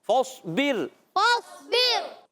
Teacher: اور را کو باریک کریں. را ساکن سے پہلے زیر.